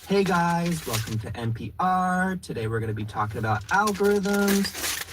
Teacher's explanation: It has that uptalk, it has the rising tone.